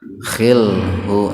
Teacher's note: hu yang ini enggak dibaca mad silah qasirah, tapi dibaca qasar saja, dibaca pendek, karena sebelum hu huruf lamnya sukun itu.